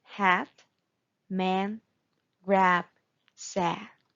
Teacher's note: wide open mouth your jaw is down and back of the tongue is down